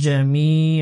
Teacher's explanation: এক আলিফ মাদ হবে, জেরের বাম দিকে জজমুল ইয়া মাদের হরফ